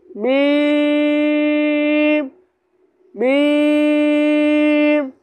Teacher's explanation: मीम दोनों होठों के खुश्क हिस्से से। अब ये दोनों होठ है बाहर वाले, ये बाहर वाले जो है ये खुश्क हिस्से यानी सूखे हिस्से हैं होठ के, तो ये खुश्क है।